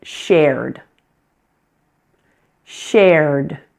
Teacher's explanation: This one has one syllable. It may look like it should have two syllables, but in fact we only pronounce the one vowel sound, air.